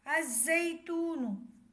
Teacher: لام نہیں پڑھا جائے گا، الف کو زا سے ملائیں گے۔ اس کی ہجہ ہے حمزہ زا زبر از، زا یا زبر زئی، الزئی، تا واو پیش تو، الزیتو، نون پیش نو، الزیتون۔